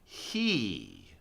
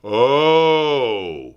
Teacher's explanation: We go from a very closed mouth, high tongue position, as in the word he, to the most open sound, oh, where we really drop our jaw and drop our tongue.